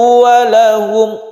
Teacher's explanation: rau sendiri ini disebut ra tafkhim atau tebal ya, karena berfathah